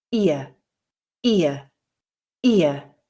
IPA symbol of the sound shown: ɪə